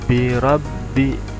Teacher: karena ada tasydid jadi agak ditekan, ditahan.